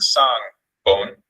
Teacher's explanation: the falling tone has high falling pitch and modal voice quality.